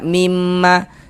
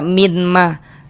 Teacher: Cara membacanya dengan cara memasukkan. Jadi bunyi nun sukun atau bunyi tanwinnya itu dimasukkan ke huruf idgham bi gunnah. Kemudian disertai dengan dengungan, disertai dengan gunnah. Nah, jadi ini kita masukkan.